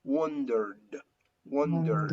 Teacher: the ending of the verb wonder. There is vibration, so that ed sound is pronounced like d, like d, d, d, wondered, wondered.